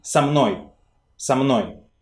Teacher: So in fluent speech, prepositions tend to merge with the word they precede. And when two words merge, they can have only one stressed syllable for two words.